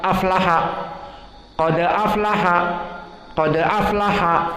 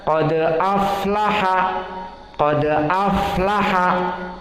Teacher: sifat rokhawah dia juga lambat, maka dibaca aflaha, tidak boleh cepat. Aflaha, qad aflaha, maka ini salah.